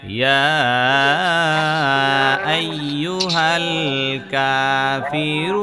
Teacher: ইয়ার মধ্যে তিন আলিফ পরিমাণ টান দিবেন।